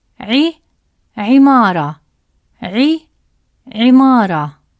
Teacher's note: When عين carries the short vowel كسرة, which is placed below the letter, it produces the sound عي, as in the word عمارة, which means building. Spread your lips slightly to make the short عي sound, like a smile.